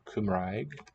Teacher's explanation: a k sound for short c y m r for kumraig the r is a trill at the tip of the tongue like in italian